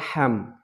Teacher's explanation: হা হচ্ছে গিয়া হলকের মাঝখান দিয়ে হলকের মাঝখান দিয়ে একটু চাপ দিয়ে চিকন করে